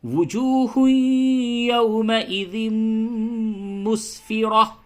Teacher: اب یہاں پہ آپ کو غنہ کرنا ہے، تنوین کے بعد یا ہے تو ادغام مع الغنہ ہوگا